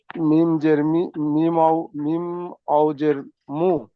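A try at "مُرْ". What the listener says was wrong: ওখানকার ওয়াও নেই, দেখে পড়েন। মিম র জাবার নেই, জাবার নেই, মিম রজের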